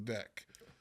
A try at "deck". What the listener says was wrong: Why'd you say deck with like so much ick in it? Like you said Dick.